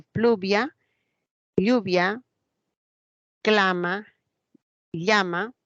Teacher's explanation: los grupos iniciales como pl FL c l evolucionaron a una elle